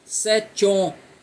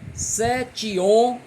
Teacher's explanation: Eu não junto o ti de 7 com o o de homens, porque on é sílaba tônica, então o ti não vai juntar com on.